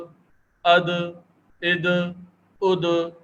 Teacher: حمزہ دال زبر اد، حمزہ دال زیر اد، حمزہ دال پیش اد، اد اد اد. یہ حروف قلقلہ ہے تو یہ ساکن ہونے کی صورت میں قلقلہ ہو رہے ہیں. دال بھی حروف قلقلہ میں سے ہے.